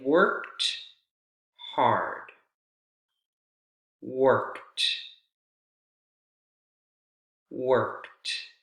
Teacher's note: if the Ed comes right after a voiceless consonant sound like for example the k k consonant sound in work and the Ed is going to sound like a voiceless T